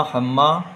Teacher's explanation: گنہ بھی ہوگا کیونکہ میم میں تشدید ہے، ہر وہ میم جس پر تشدید ہو یا نون جس پر تشدید ہو اس میں گنہ ہوتا ہے، یہاں بھی گنہ ہوگا۔